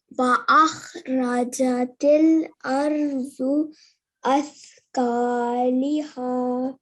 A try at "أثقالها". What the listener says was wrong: There is a fatha on the on the lam here.